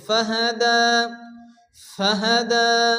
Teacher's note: দালের উপর খারাজ জবর এগারি পরিমাণ টান দিয়ে পড়তে হবে